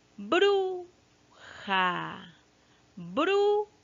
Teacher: Aquí la sílaba tónica recae en bru, ¿no? En la primera sílaba, ¿ya? Y esa sílaba fuerte, esa sílaba que tiene el acento, se llama sílaba tónica.